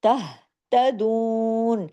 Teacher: اس میں دو کو ہم نے کھینچا، کیوں، واو مدہ ہے ساتھ میں ، تہتدون، جماؤ کے ساتھ، یہاں پہ آپ نے جھٹکا نہیں